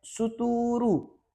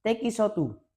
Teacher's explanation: Phonologically, Japan English followed the example consonant vowel structure of the Japanese language. So, words like stool became suturu and text becomes tekisotu.